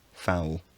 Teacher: the epenthetic vowel has disappeared and the diphthong has progressed, giving foul.